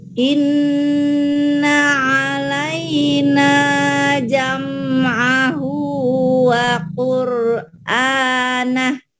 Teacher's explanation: 1 alif sampai 1 alif setengah. Dan ada gunahnya, ada dengung ke hidung, itulah yang dikatakan gunah.